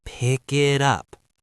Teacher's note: Do you hear how the K in pick moves to the I in it?